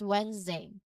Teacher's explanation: with a buzzing sound and a diphthong at the end. Now notice how the N goes straight to the Z sound, right?